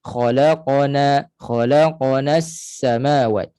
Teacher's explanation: Qaf tidak ada hams, tidak ada angin yang terlepas. Pastikan jahar, suara nafas itu tertahan, tersekat.